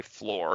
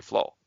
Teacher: at the lowest socioeconomic level, people were dropping the R all the time